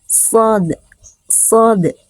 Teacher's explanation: lidah bertemu atau nempel dengan langit-langit, namanya itbaq. Nah, ini lidah nempel ke ini, makanya sifat isti'la dan itbaq ini menyebabkan huruf shad menjadi termasuk huruf tebal, shad, shad, gitu ya.